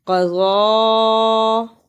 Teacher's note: قاف پر زبر اور ضاد پر کھڑی زبر اور چھوٹی مد ہے، اس کو لمبا کرنا ہے